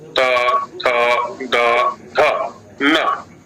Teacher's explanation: हमारा जो अभ्यास है, जैसा आप कह रही हैं कि दंत मूल में जिह्वा जाती है, त, थ, द, ध, न। जहाँ आगे के दांतों के नीचे मसूड़े हैं, मांसल भाग है, वहां स्पर्श हो रहा है, तो हमारा अभ्यास दंत मूल का हो गया।